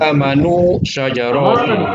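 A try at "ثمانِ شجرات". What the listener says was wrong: Hanya panjang, Pak Haji. Tamanu. Hanya bedakan antara samanu, maknya panjang, dengan samanun. Kalau maknya pendek, samanun artinya adalah harga, price. Kalau 8, bahasa Arabnya maknya panjang, samanun.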